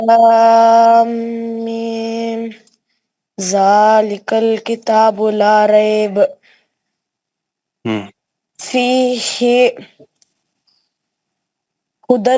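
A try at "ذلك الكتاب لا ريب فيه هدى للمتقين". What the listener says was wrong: پھر رکنا نہیں ہے, فی ہی پہ سانس نہیں چھوڑنا.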